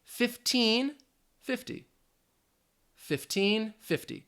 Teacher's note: you don't hear that flap T really at all in 50, so you really need to listen for that een, that long E sound